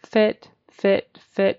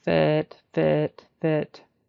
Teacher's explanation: you can see how my mouth doesn't go very wide for fit it's more loose it's fit and make sure your tongue doesn't go back too